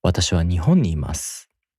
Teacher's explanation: In this sentence, the first accented mora is also ほ because わたし and は have no accent.